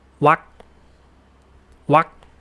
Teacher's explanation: Wak means a pause or a space. And the ending is a glottal stop K, so it's not pronounced